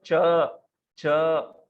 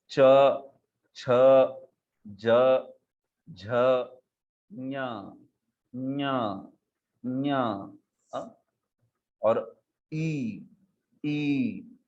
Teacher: जिह्वा का मध्य भाग तालु को स्पर्श करके ये बोले जाते हैं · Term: तालव्य